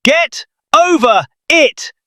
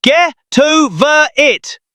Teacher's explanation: The T from get moves over to over. The R from over moves over to it. It sounds like one long, strange word. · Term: linking